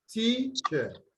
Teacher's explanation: teacher has the Schwa sound on the second syllable. So that cannot be stressed. So the stress will be on the first syllable.